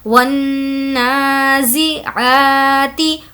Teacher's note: वन, वाव नून ज़बर वन। नून पर यहाँ पर कुछ देर आवाज़ को रोकेंगे क्योंकि नून पर तजदीद है तो गुन्ना होगा।